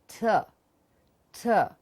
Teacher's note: In English, there is nothing called ठ. Okay, it's a t. T from the teeth ridge.